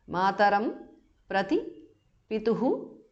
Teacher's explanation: visarga changes to jihva mulya